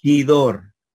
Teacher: la letra ro se va a pronunciar como eres suave cuando está en medio o al final de una palabra